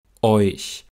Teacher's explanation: sind die Lippen beim Ich-Laut noch leicht gerundet, wegen des vorangegangenen Eu-Diphthongs. Und man sieht auch hier wieder, dass die Zähne natürlich wieder nah beieinander sind.